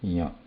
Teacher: the tongue is brushing at the talu part, but then the air passes through nose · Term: anunasika